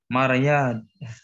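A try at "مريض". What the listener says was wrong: Maridun. Maridun. Jangan ingat Maryam ya.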